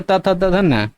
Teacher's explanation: आपका जो जीभ है, ठीक है, वो जाके दांत में टच होना चाहिए